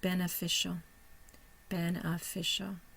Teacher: we'll see that the third syllable is a primary stress syllable